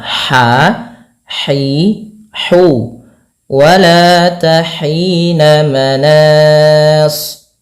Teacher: Bagaimana cara pelafalan ha-nya? Yaitu dari tengah tenggorokan kita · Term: ha kecil